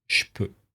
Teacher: dans la vie de tous les jours, on utilise souvent le je, et dès que c'est suivi par une consonne sourde, on va avoir tendance à le dire che. Il faut bien garder en tête que voilà, si vous n'entendez pas clairement je, il faut vous habituer à entendre le son che qui veut finalement dire la même chose.